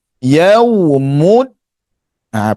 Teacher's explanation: kita tahan suara dal antara sifatnya yang menonjol di sini iaitu syiddah tertahan suara yaumud ha perhatikan gerak mulut saya mud ha okey letak bagi tepat Hujung lidah pada pangkal gigi kacip atas.